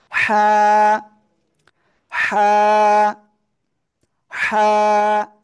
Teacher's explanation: থেকে উচ্চারণ হয় জানেন গলার মধ্যখান থেকে আমার সাথে বলতে হবে গলার মধ্যখান থেকে উচ্চারিত হয় কিন্তু গলাটা একটু চেপে উচ্চারণ করতে হবে আর মুখ দিয়ে হালকা বাতাস বের হবে